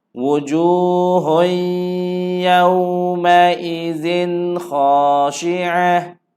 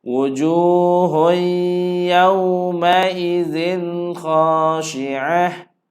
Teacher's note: Tanwin bertemu dengan kha, tiada dengun